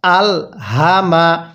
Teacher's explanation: এই হাটা উচ্চারণের সময় গলার মধ্যে হালকা আওয়াজ করতে হবে। স্মরণ রাখবেন, এরকম পেঁচানি হাগুলো উচ্চারণের সময় গলার মধ্যে আওয়াজ করতে হয়।